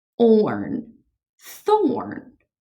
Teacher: Remember, when you put a TH together, it makes the th sound. Tongue between your teeth, it makes the th sound.